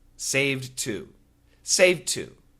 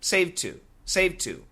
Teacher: Don't worry about the D. You can use the T only.